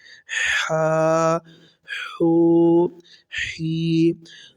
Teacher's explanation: حا، الف زبر حا، حا واو پیش حو، حا یا زیر حی۔ اس حا کو باریک پڑھیں گے، یہ حلق کے درمیان والے حصے سے ادا ہوگا